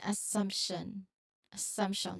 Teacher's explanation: So while you might expect just an MT based on spelling, well, subtle P sound often naturally appears within the MT. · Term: epenthetic